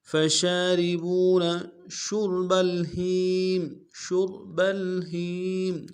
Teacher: شین کو را کے سامنے لانا ہے، را کو موٹا کریں گے